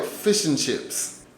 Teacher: the an becomes very soft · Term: connected speech